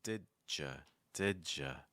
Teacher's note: if you link a D sound to a Y sound, it often ends up sounding like a J.